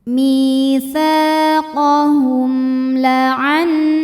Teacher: Kemudian berikutnya ada hukum izhar syafawi. Sebab mim sukun menghadapi huruf selain mim dan ba, yaitu huruf lam, maka mim sukun kita bunyikan dengan jelas.